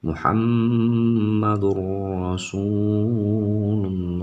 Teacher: Ketika tanwin atau nun mati atau sukun dia menghadapi kedua huruf tersebut, lam dan juga ro, maka dia disebut dengan idgham bila gunnah ya, jadi melebur, jadi suara tanwinnya hilang dan langsung masuk ke dalam suara ra.